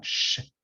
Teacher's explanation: The Spain S is more of a sh sound